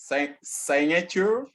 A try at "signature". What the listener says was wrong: It is sig. It is no more sign again. Signature. Signature. Signature. So the only word that is pronounced I is sign or signs.